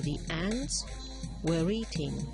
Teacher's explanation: the word the is going to be transcribed with the weak form showing the vowel e, not the vowel schwa, because then if we were to use the vowel schwa, this would have begun with a consonant.